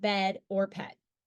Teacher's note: the short e is produced with the tongue positioned at the mid height and front position in the mouth